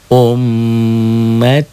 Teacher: M-nya jadi double tiga. Ummatukum double ditahan dan dengung.